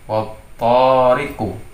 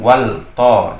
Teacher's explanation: Nah, maka membacanya menjadi idgham, memasukkan huruf waw ke dalam huruf ta, sehingga huruf lam, alif dan lam tidak terbaca, atau lam ta'rifnya tidak terbaca, diidghamkan. Bacanya menjadi wattariqu.